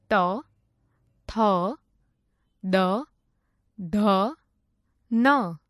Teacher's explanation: જે વર્ણોનું ઉચ્ચારણ કરવા માટે જીભ વડે ઉપલા દાંતોને સ્પર્શ કરવું પડે તે વર્ણોને દંત્ય વર્ણો કહે છે